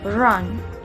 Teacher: Disimbolkan dengan huruf R dan konsonan ini tergolong dalam palato alveolar, approximate, dan juga voice sound.